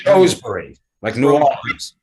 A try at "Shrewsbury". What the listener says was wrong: No, only two 2 syllables, Shrewsbury.